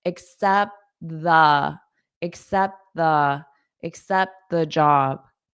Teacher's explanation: Should I accept the? Notice I don't pronounce this T on accept because I have a T right there